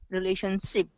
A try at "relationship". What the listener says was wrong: Well, you want to push your lips forward and go shh. You're rounded and forward. Shh. Yeah, it needs a little more of the lips pushing forward, rounded lips. It's like you're going to kiss somebody.